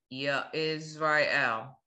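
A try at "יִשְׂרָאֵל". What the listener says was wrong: No, there's no ya. Look at the vowels. What's this vowel? And what's this vowel? So you blend into it.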